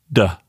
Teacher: the letter D is just like a T, except your vocal cords are vibrating